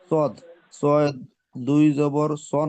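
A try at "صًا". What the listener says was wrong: না, সদ, সদের সাথে আরো একটা অক্ষর আছে তো, এই যে কালো কালো,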